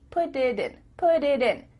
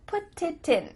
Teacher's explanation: your tongue is just tapping the top of your mouth to make a d